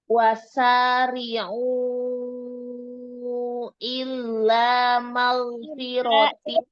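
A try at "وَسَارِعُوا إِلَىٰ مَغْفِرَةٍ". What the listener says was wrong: Ilanya, ila, jangan illa. Ila,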